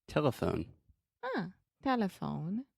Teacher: so the schwa is the middle syllable.